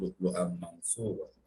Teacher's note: We are assimilating the sound of Tanween into Mim. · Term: Idgham Bagunna